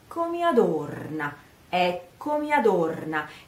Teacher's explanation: The stress of the sentence is on the O, adorna, O, it's a O, small O, adorna. So you say eccomi, first stress is on the first E of eccomi and then on the O of adorna. So eccomi. Eccomi adorna, eccomi adorna.